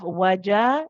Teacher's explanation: The jim is produced from the middle of the tongue. The jim is actually a shidda letter.